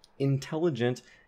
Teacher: you have that alveolar N staying as alveolar because it's before an alveolar T.